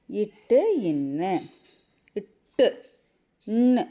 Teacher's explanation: நாவின் நுனி அன்னத்தின் நுனியை பொருந்துவதால் பிறக்கும் எழுத்துக்கள்